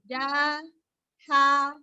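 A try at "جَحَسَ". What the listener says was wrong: Nah, tidak ditarik ja-nya awalnya. Ja-ha-sa. Ja-ha-sa.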